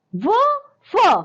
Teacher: इनका उच्चारण स्थान है दंतोष्ठ, यानी कि दांत और ओठ, यानी दांत और ओठ के प्रयोग से होता है, इसलिए हम इसे दंतोष्ठय कहते हैं।